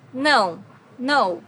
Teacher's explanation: no has a very unique sound in Portuguese because it's a nasal sound